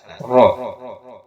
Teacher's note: Tafhim itu pangkal lisan angkat ke atas, ro.